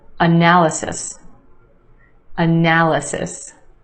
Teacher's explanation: four syllables in this word with emphasis on the second syllable